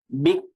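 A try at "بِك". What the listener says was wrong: আচ্ছা, শুধুমাত্র বিক এমন শোনা যাচ্ছে, বিক না, বিক। মানে পরে ছেড়ে দিবেন, জিহ্বার অগ্রভাগটা ছেড়ে দিবেন। হ্যাঁ, পরে বাতাসটা শোনা যাচ্ছে না বা এটা বোঝা যাচ্ছে না।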